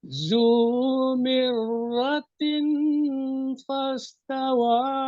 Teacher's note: Lagu ada tapi dengung belum kena lagi. Belum dua harakat lagi. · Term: ikhfa haqiqi